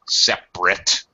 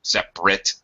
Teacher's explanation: when it's a verb it gets pronounced strongly when it's a noun or an adjective it gets really reduced